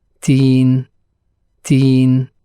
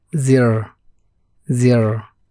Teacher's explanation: The Ya sound after the Ta sound in teen is longer than that after the Za sound in zir